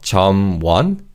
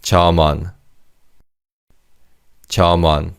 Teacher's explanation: the 미음 받침 in the first syllable carries over to the second syllable 원. So it's not 점원, it's 점원, 점원.